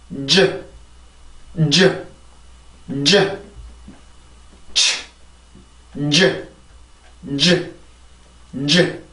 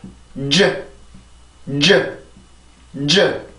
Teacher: 자, 입술 모양, 마지막에 나오는 여기에서는 입술 모양이 중요하고 그 혀를 막는 것도 같아요. 혀를 치조를 먼저 막아주고 나서 그 다음에 소리를 그냥 바로 꺼내는 게 아니라 이렇게 그 혀 중간을 들어 올려서 경구개 쪽으로 붙여주게 되죠. 그래서 완전하게 경구개에 밀착을 시키는 게 아니라 공기구멍만 살짝 만들어줘서 이렇게 이 상태에서 빠져나오는 소리가 바로 이 발음이었습니다. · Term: 치조 폐찰